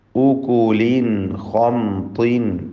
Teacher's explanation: ഉകുലിൻ ഖംതിൻ, ഇവിടെ ഉകുലിൻ എന്നതിലെ തൻവീനിനെ ഇൽഹാർ ഹൽഖി നൽകി മണിക്കാതെ വെളിവാക്കുക. ശേഷം ഖാ വന്നു.